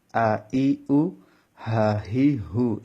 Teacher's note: এখানে টান হবে না, এখানে কোথাও টান হবে না, একটা অক্ষরের মধ্যেও টান হবে না। তাড়াতাড়ি করে পড়তে হবে, কারণ এগুলো হচ্ছে হরকত।